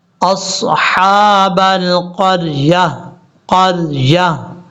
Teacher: وقف جب کریں گے تو تا کو ساکن کر دیں گے، تا کو ہا بنا کے ساکن کر دیں گے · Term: وقف لازم